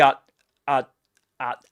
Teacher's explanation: He produces a glottal stop. We use this symbol which is similar to an interrogation mark to indicate that there's a glottal stop there.